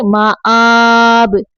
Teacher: حمزہ کھڑی زبر آ جھٹکے سے